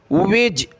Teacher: जीम का जो colour है ये कलकला का है, यह हमने कलकला करना है